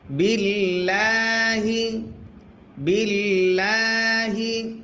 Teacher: আল্লাহ শব্দের লামের ডাইনে জের যদি হয় আল্লাহ শব্দের লাম তখন পাতলা করে পড়তে হয়।